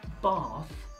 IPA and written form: bɑːθ (Bath)